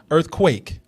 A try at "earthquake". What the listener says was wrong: You're stretching your mouth out a lot.